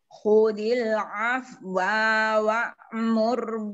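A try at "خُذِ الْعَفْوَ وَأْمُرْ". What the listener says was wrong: bil afwa wa'mur wa-nya pendek.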